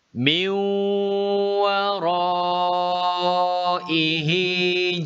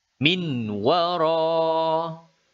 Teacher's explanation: bunyi huruf nun dimasukkan ke dalam huruf wow menghasilkan bunyi meong-meong tidaklah seperti berikut minwal roh itu salah bacaannya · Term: idgham bighunnah, idgham bi gunnah